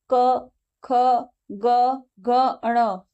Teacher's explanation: मतलब कंठ से बोले जा रहे हैं, गले से बोले जा रहे हैं। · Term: कंठ वर्ण